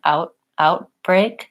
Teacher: I'm just stopping the air before I get to lifting my tongue out outbreak perhaps my tongue is lifting a little further back